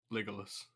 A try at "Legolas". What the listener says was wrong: Okay, it sounds like you're saying Legolas, like with more of an I than an O. I was like, oh, Legolas.